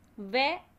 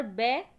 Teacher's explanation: वे दंत ओष्ठ है और बे ओष्ठ ध्वनि है